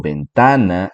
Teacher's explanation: la segunda sílaba ta es la sílaba tónica